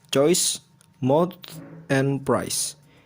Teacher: In most standard varieties of English, These diphthongs start with open vowels and then rise to closed vowels. Generally, in the area of I or U, these are called closing diphthongs for this reason.